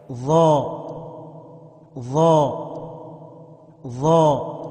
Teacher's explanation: اوپر کی دانتوں کا سرا اور سیرہ زبان مل کر ضا ادا ہوتا ہے۔ ظا ظا ظا نوک زبان اوپر نیچے کے دانتوں سے مل کر زا ادا ہوتا ہے۔